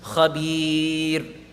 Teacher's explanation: If before the ra sakin there appears a ya sakin, there's a very definitive rule for this, no exceptions. The ra will always be read empty mouth.